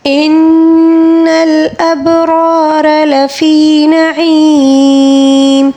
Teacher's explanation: ان نون مشدد ہے، یہاں پر غنہ ہوگا۔ ان الابرار، با کے اوپر ساکن ہے، اس کو قلقلے کے ساتھ پڑھیں گے۔